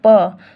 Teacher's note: उच्चारण होता है उसे वर्ण का वही स्थान होता है वैसे पी उच्चारण जो होता है वह दोनों होठों के आपस में होता है अगर उच्चारण करके देखो पी तो दोनों ओथ जो आपस में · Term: ओष्ठ